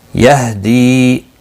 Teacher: دی یا مدہ ہے، ایک الف کے برابر کھینچ کر پڑھیں گے